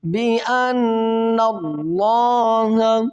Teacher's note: اور لفظ اللہ سے پہلے دیکھیں گے تو الف اس سے پہلے ہے کہ زبر ہے، تو پھر یہاں پر ہم کریں گے لفظ اللہ کو موٹا کریں گے. یہاں پر نون مشدد غنہ کرنے کے بعد یہ کریں گے کہ لفظ اللہ کو موٹا کریں گے